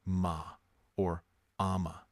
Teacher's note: this gentle nasal hum, this soft closing of the lips